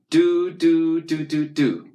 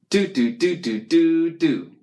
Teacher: Your tongue touches the roof of your mouth just behind your top teeth.